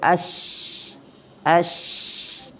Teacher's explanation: Pada istilah menghemburkan ataupun berhemburan angin antara gigi depan dengan langit-langit keras ketika menyebut hurufnya ash. Dia keluar antara celah-celah gigi tu. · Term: tafasyi